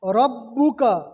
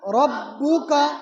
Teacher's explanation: را کے اوپر کیا ہے؟ زبر ہے، تو را کو موٹا پڑھیں گے، پور پڑھیں گے۔